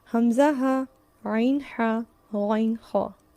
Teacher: اقصی حلق سے حمزہ ہا، وسطی حلق سے عین ہا، اور ادنا حلق سے غین خا.